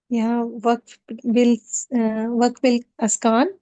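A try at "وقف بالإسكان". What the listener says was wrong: اسکان زیر کے ساتھ. ٹھیک ہے سارے وقوف کے نام زیر سے.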